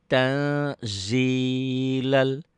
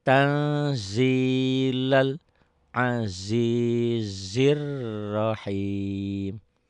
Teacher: Nun ketemu Zai jadi Eng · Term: ikhfa